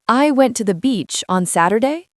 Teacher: It is when the voice goes up at the end of a sentence. Like asking a question, but it is not a question.